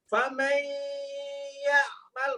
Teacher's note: Ini blenderan antara nun dengan ya. Maka separuh nun, separuh ya di blender. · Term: idgham nakis bi gunnah